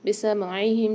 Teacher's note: بسمعہم، سین کی آواز واضح ہونی چاہیے، عین کی بھی واضح ہونی چاہیے، حلق کے درمیانی حصے سے ادا ہوتا ہے عین